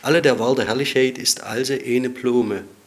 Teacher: Sehr schön zu sehen sind die durchgehend erhaltenen Langvokale Lang E und Lang O, die im Althochdeutschen entweder diphthongiert werden, wie in Blume, oder sie durch einen Diphthongwandel auszeichnen, also AI zu E in Eine.